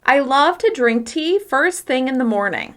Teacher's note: As you can hear, I'm stressing love, drink, tea, first thing, morning.